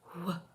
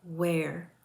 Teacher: The w sound is an unvoiced velar glide.